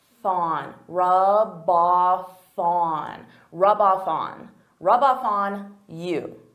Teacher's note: So here I'm taking the F from off and I'm adding it to on.